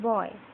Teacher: Closing diphthong. The glide begins near the back half open position and moves in the direction of I. The lips are open rounded at the beginning and neutral at the end. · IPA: /ɔi/